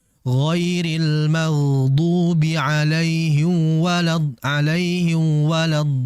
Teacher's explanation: Mimnya tidak jelas karena mim dan wau ini makhrajnya, cara pengucapannya itu sama berada di bibir. Maka karena mungkin ya mungkin karena mempersiapkan di wau ini sehingga mim dilupakan padahal tetap dia harus dijelaskan dari segi makhraj dan sifat. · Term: meleburkan mim